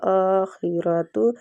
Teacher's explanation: آخرت حمزہ کے اوپر کھڑی زبر ہے تو کھڑی زبر کو بھی ایک حرکات کھینچ کے پڑھا جاتا ہے · خا مستعلیہ حروف ہے اور را فتح کی وجہ سے پورا پڑھا جائے گا